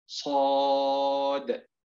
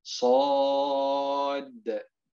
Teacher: عندما نقول بالأداء المستقيم صاد، هذه دال ساكنة، لكن لو قلنا صاد أصبحت دال مشددة